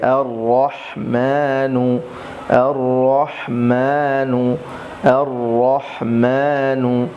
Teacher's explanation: হামজা র জবর এর, র হা জবর রহ এর রহ, মিম খারা জবর মা নুন পেশ নু। এখানে দেখুন রর উপরে জবর এসেছে, এজন্য রকে মোটা করে অবশ্যই পড়তে হবে